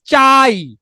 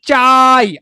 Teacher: তাহলে এই যে দুটো স্বরধ্বনির মধ্যে খেয়াল করেন, আ কে চাইলেই আপনি কি করতে পারতেছেন, লম্বা করতে পারতেছেন, তাহলে আ হচ্ছে পূর্ণ স্বরধ্বনি, আর ই কে চাইলেই আপনি লম্বা করতে পারছেন না, ই হচ্ছে অর্ধ স্বরধ্বনি